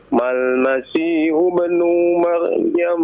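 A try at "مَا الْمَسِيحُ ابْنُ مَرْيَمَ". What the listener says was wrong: Coba lihat, lihat panjang pendeknya ya. Nah, lihat panjang pendeknya ya. Jadi panjangkan ya.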